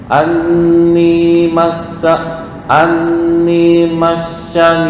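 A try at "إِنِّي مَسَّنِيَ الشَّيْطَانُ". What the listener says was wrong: Nah, kebalik. Itu shin tuh. Si S biasa. Massaniyash.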